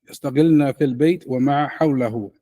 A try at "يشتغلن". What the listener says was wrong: Okay, but you're saying it too quick. You say يشتغلن. It's يشتغلن.